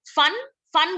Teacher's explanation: फन का फ इज लेबियोडेंटल